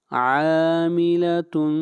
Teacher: عین کو کھینچ کر پڑھیں گے ایک الف کے برابر